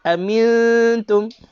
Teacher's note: Nun tiada tanda mati. Nun kosong. Selepasnya bukan huruf lam ataupun huruf ra, dengungkan sahaja.